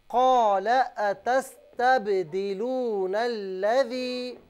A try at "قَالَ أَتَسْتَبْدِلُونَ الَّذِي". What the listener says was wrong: اچھا بہن لام کو بالکل نہ کھینچیں. قال أتستبدلون الذي